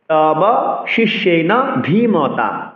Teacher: ধী মহাপ্রাণ দীর্ঘস্বর উচ্চারণ করতে হবে